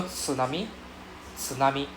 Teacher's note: so it's not really s it's not su sound it's t su